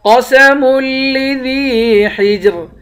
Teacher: جیم حروف قلقلہ ہے، اس کو قلقلہ کر کے پڑھیں گے، حجر آخر میں را ہے، اس را کو باریک پڑھیں گے